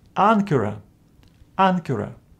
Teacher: this first gamma is pronounced as n